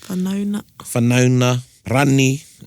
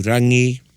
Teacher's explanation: Drop the G. Drop the G, the NG sound, and there'll just be the N sound. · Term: the dropping of the NG